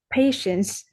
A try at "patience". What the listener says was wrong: Yes, all right.